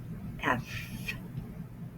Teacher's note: First, the sound comes from the back of my throat, and then I put my top teeth over my bottom lip.